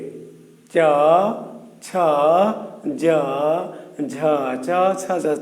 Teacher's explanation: জিহ্বাটা স্পর্শ করছে কোথায়? তালুতে। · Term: তালব্য